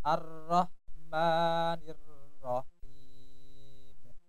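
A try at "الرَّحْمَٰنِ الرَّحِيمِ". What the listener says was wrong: Maknya terlalu panjang. Ar-Rahmanir-Rahim. Maknya terlalu panjang. Hanya dua harokat.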